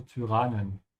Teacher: it's pronounced a bit different than English, so you have to pronounce it with a bit of an Ü